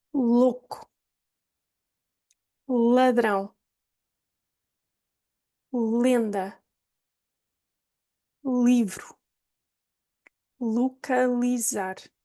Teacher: the tip of the tongue is going to touch the back of the top teeth and drop down. So it's a tap. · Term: light L